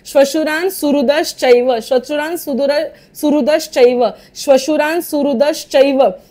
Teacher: बोलत असताना नकळत द च्या पुढे विसर्ग बोलला जातोय